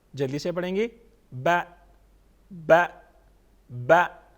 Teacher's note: half الف کے برابر زبر کو ہم پڑھتے ہیں